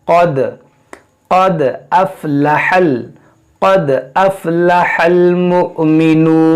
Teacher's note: क़ाफ और ये मोटा करेंगे, दाल में कलकला करेंगे